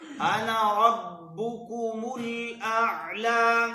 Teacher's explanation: أنا کے نون کو لمبا نہیں کرنا